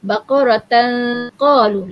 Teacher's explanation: Lidah kita bila bacaan ikhfa ni dia tak menyentuh. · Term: ikhfa hakiki